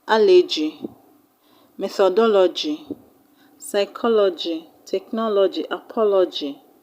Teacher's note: They all have their stress on the third syllable from the end of the word.